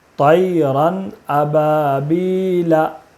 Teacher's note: تنوین کے بعد حروف حلقی کے 6 حرفوں میں سے حمزہ ہے، اس لیے تنوین کو بغیر غنہ کے جلدی پڑھیں گے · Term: اظہار